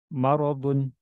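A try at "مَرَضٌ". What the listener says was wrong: Jangan mo. Mimnya tipis.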